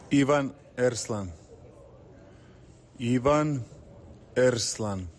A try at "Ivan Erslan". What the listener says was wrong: There's a roll of the R there. Erslan.